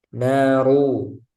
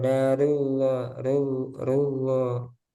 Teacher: Sekarang yang keempat, ro dibaca tebal yaitu ketika ro berharokat dhammah, ru.